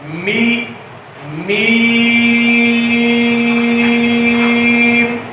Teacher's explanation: इसके बाद मीम है, सुलासी रूप में आता है, 3 अलिफ लंबा करके पढ़ा जाएगा, और इसका मखरज है कि یہ دونوں ہونٹوں کے خشکی والے حصے سے ادا ہوتا ہے